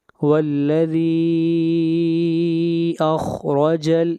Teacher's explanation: ذی کے اوپر مد منفصل ہے، اس مد کو 3 الف کے برابر کھینچ کر پڑھتے ہیں۔ والذی اخرج، خا کو موٹا پڑھیں گے، خا حروف مستعلیہ میں سے ہے، اور را کو موٹا پڑھیں گے، را کے اوپر زبر ہے۔